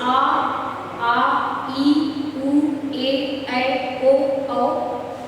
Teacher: इनको बोलने के लिए जीवा हमारी कहीं भी स्पर्श नहीं करती, ये सीधे कंठ से निकलते हैं, गले से निकलते हैं, निर्बाध मुख से निकल जाते हैं। हमारी जीवा, हमारी दंत कहीं भी टच नहीं करते, मतलब कहीं भी स्पर्श नहीं करते। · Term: स्वर वर्ड